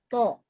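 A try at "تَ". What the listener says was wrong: Jangan ada yang monyong ya. Setiap dia, kecuali domah. Domah boleh monyong. Tapi setiap dia berfathah, to. Gitu. To. Tapi kalau dia domah boleh monyong. Tu. Memang kalau domah harus monyong. Tu. To, ti, tu. To, ti, tu. To, ti, tu. Nggak bergerak.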